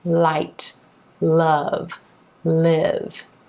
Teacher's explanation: a word or syllable is called the light L and it's articulated with the tip of the tongue behind the top front teeth the back of the tongue is down